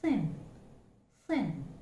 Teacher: the sound is called a voiceless consonant, dental fricative, as audible friction is felt and heard.